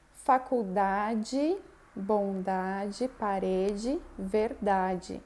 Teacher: Bom, mesma coisa acontece com o D, né? Quando eu tenho um D com E, que ele não é a sílaba mais forte da palavra, ele é átono, eu vou pronunciar como di